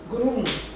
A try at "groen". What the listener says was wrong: Groen aí você está falando já com outro sotaque. Groen. Lembra do alfabeto? Eu falei que vocês falam o alfabeto direito. Primeira letra você sempre tem que pronunciar mais forte. Groen. Groen. Groen.